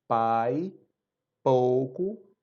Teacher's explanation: a produção de som ela é mais aberta a cavidade oral é mais aberta